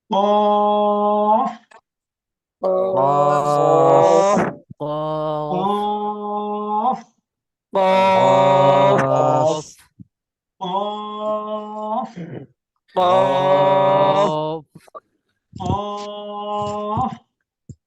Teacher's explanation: জিহ্বার গোড়া তার বরাবর উপরে তালুর সঙ্গে লাগাইয়া ডাল কাকের মতো মোটা আওয়াজে · এই যে তালুর সঙ্গে লাগাইয়া উচ্চারণ হবে। জিহ্বার গোড়া তালুর সঙ্গে লাগাইয়া এই হরফটা উচ্চারণ হবে।